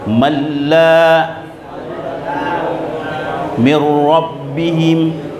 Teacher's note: tidak boleh didengungkan, dilebur tapi tidak didengungkan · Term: idgham bila gunna